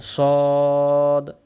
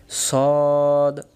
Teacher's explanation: সদক্ষর সামনের নিচের দাঁতের আগা থেকে শীষ সহ মোটা করে পড়তে হয়